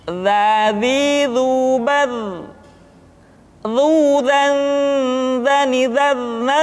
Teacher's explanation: huruf dha diucapkan dengan menyentuhkan ujung lidah dengan dinding dua gigi seri bagian atas seperti kita mengucapkan huruf tha.